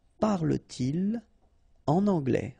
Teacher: so no liaison after your pronoun. Okay, just because the structure is like that.